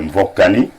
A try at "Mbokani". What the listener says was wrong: Il faut prononcer comme ce n'est pas Mvokani, c'est